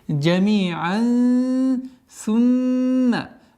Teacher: Здесь у нас ихфа в размере двух огласовок удержание назализации.